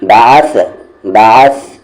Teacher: عین بیچ والے حلق سے، سا سامنے والے دانت کا کارنر اور زبان کا کارنر